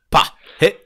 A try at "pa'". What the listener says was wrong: Ouais, alors attention parce que tu fais presque un R après le pas.